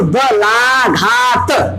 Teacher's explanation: ला और घा पे दबाव अधिक पड़ रहा है